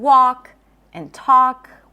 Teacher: The L is also not pronounced in walk and talk.